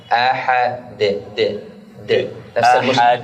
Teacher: الدال من طرف اللسان مع أصول الثنايا العليا